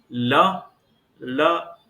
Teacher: तो मूर्धा हो गया। ल ल ल बोलते समय हमारी जिह्वा दंत से टकरा रही है, हमारी जीभ दांत से टकरा रही है, तो इसलिए इसका उच्चारण स्थान दांत हो गया।